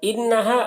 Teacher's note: اب یہاں پر نون مشدد ہے تو غنہ کے ساتھ میں پڑھیں گے، انہا علیہم، عین کو حلق سے ادا کریں گے، علیہم۔